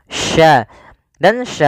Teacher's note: sya ini bagaimana cara pelafalannya dari tengah lidah kita karena makhrajnya dari tengah lidah Sya dan Sya memiliki sifat namanya tafasi tafasi itu yaitu menyebarnya